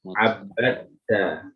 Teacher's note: Masuk ke ta. Dalnya itu hilang, masuk idgham ke ta.